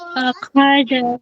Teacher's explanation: خا سے پوری خراٹی جیسی آواز آنی چاہیے